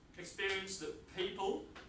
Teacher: the T is assimilated to a P